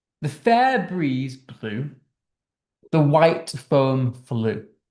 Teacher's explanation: notice there we've got the repeated B and F sounds, this plosive B and fricative F sounds